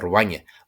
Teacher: it won't be a bilabial fricative, v, but more like a W, a bilabial approximant